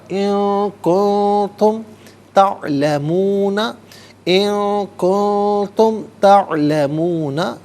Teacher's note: کن میں نون ساکن ہے تو دونوں جگہوں پر ناظرین اخفا ہوگا